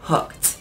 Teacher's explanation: when we say hooked you get the k and the e d has like a t sound hooked so even though it's spelled e d we say it